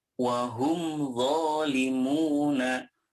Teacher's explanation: mim sukun nya dibaca jelas-jelas disini tanpa ada embel-embel dengung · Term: izhar syafawi